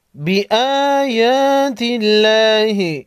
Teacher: ان الذین یکفرون بآیات اللہ، بآیا حمزہ اور یا پر کڑا زبر ہے، 1 سیکنڈ لمبا کریں گے۔ لفظ اللہ سے پہلے حرف تا پر زیر ہے، لفظ اللہ کے لام کو باریک پڑھیں گے